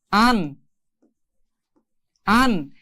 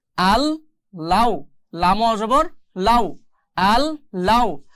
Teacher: তো ঈদগামে বেলাগুন্না মানে হচ্ছে এই নুন সাকিনের জায়গায় এই লামটা উচ্চারণ করতে হবে, বা লামের সাথে নুন সাকিন বা নুন সাকিনের সাথে লাম মিলিয়ে পড়তে হবে, কিন্তু এখানে কোনো গুন্নাহ করা যাবে না